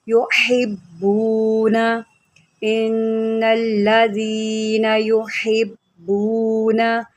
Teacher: बा को 2 मरतबा पढ़ेंगे, एक हम पीछे मिलाकर पढ़ेंगे हा के साथ, फिर इसको हम उसकी हरकत के मुताबिक पढ़ेंगे क्योंकि बा के ऊपर तशदीद है। तशदीद वाला हरफ 2 मरतबा पढ़ा जाता है।